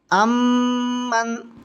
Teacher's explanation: امن، عین میم زبر ام، میم نون زبر من، امن، نون ساکن ہے، نون ساکن کے بعد میں میم آ رہی ہے، تو یہاں پر ادغام مال گنہ ہو رہا ہے اور اس کو ملا کر کے پڑھیں گے گنہ کے ساتھ